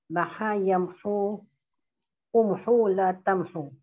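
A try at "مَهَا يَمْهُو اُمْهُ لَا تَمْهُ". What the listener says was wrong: Bagus, selamat.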